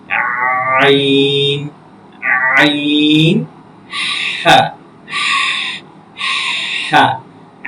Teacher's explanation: হলকের মাঝখান হইতে আইন এবং হা